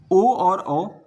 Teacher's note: ओ और ओ कंठ और ओष्ठ से इनका उच्चारण होता है। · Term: कंठ ओष्ठ